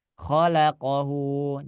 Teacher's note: Jadi jangan kho-nya dipanjangin ya.